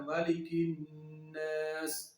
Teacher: 2 second کے لیے آواز ناک کے اندر سے، غنہ ناک کے اندر سے ادا ہوتا ہے